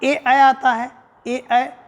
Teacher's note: ए ऐ की बात करते हैं तो कंठ तालू है